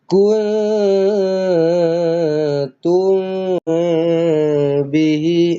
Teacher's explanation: Kalau mim kosong jumpa dengan ba ikhfa syafawi. Tapi dua-duanya perlu disamar-samarkan, perlu didengungkanlah. Okey. Jangan baca macam izhar.